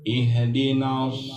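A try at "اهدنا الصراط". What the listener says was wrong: Jangan pakai apa kol-kola hanya. Sod, so, si, ihdinas sirat. Sodnya tuh benar itu. Ihdinas siratal ihdinas sirat. Ihdinas sirat. Sin.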